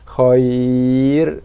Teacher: Sedangkan ketika waqaf, ra bersifat dengan sifat tarkib nipis, kerana bila kita waqaf, ra kita matikan dia, kita baca dengan baris mati. Sebelum ra adanya huruf ya mati, maka ra-nya sifatnya nipis.